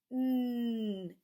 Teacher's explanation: It's voiced. You can feel your throat, your voice box vibrate.